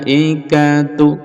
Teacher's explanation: lamnya panjang, mad wajib muttasil, bisa sampai 6 harokat